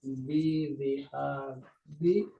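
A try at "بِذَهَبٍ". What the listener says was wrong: Bukan diab. Kalau dibaca diab itu yang benar itu zahab.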